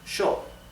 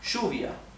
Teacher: the pronoun I yo is pronounced show in Argentina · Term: sh sound